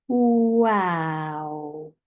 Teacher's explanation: make the word so for example for wow you might say your lips are round and more like a kiss then they open wide ah and then small again o so like this WOW small and round open wide and